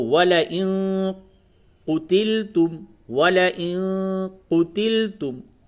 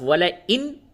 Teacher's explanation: تھوڑی سی ناک میں آواز کو، نون کی آواز کو چھپانا ہے، اسے اخفا کہتے ہیں